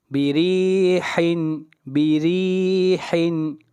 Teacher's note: را کو باریک پڑھیں گے، را کے نیچے زیر ہے